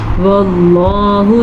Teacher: لفظ اللہ کو پر پڑھیں گے کیونکہ لفظ اللہ سے پہلے حرف پہ زبر ہے